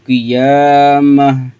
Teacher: لا اقسم بیوم القیامہ، قیامہ اس کو ہم لمبا کریں گے، یا کے اوپر کھڑا زبر آ گیا تو 1 الف کے برابر لمبا کریں گے